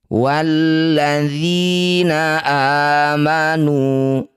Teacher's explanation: Setiap ada a, i atau u yang dibaca panjang disebut bacaan mad badal. Panjangkan a ini dua harakat.